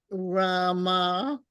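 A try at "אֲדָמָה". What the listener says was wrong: That's a dalit. Adama.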